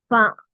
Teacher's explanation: താഴത്തെ ചുണ്ട് മേൽ പല്ല് ഫ താഴത്തെ ചുണ്ടിമേ മേലത്തെ പല്ല് കൊണ്ടുവന്നക്ക പ ഫ പീ പുലപ്പ ഒന്ന്